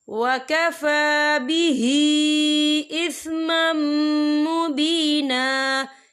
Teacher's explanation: یا دیکھیں اِثْمًا، میم کے اوپر تنوین ہے، تنوین کے بعد جو ہے میم آ رہا ہے، اور میم جو ہے رفع یرملون میں سے ہے، تو یہاں پر ادغام ہوگا، تو ہم اسے غنّے کے ساتھ پڑھیں گے